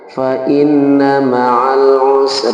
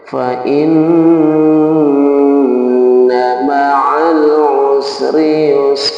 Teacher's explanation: jadi Nun bertasdid itu harus digunakan di khaisum atau di rongga hidung